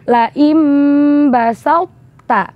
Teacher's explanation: Masih mempertahankan sifat itbaqnya huruf to tanpa mengeluarkan sifat qalqalahnya huruf to dan langsung memasukkannya ke huruf ta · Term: idgham mutajanisen